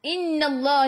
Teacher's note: nun ada sabdu tekan ke dalam nun dan dengung wajibul gunnah.